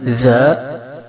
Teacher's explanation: dia keluar dari ujung lisan yang disentuhkan pada ujung gigi seri yang atas